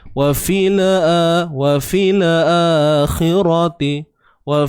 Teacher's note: jangan kita tawallud pada lam yang sukun ini, jangan kita beranakkan bunyi dia.